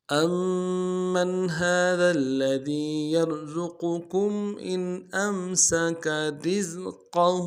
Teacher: میم کے اوپر تشدید زور دیں گے، اگلے میم کو نون کے ساتھ ملانا ہے۔ نون ساکن یہاں پہ اظہار ہوگا۔